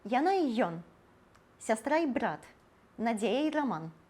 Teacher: Калі «і» – гэта злучнік, і папярэдняе слова скончваецца на галосны, то тады вымаўляем «і» як «е».